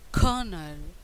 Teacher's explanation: The stress on the first syllable at the same time R is silent in British accent, but in American accent R is not silent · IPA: ˈkɜː(r) – nəl | ˈkɜː(r)nəl